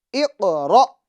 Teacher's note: را پر زبر ہو تو را کو پور یعنی موٹا پڑھتے ہیں